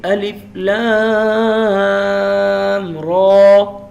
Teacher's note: را اس پہ منہ کو کھولنا ہے، ہونٹ گول نہیں کرنے. اور اسے ہم نے 2 سیکنڈ لمبا کرنا ہے.